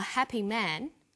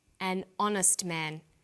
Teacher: So we say a happy man but an honest man. The H is not pronounced. So honest sounds like it starts with a vowel.